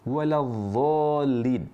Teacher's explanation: mengucapkan huruf dhad tapi dari tempatnya huruf dha. Ujung lidah diletakkan di ujung gigi seri atas.